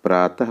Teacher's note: विसर्ग के उच्चारण में ह की ध्वनि निकलती है।